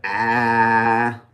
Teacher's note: If it's low and front, ah.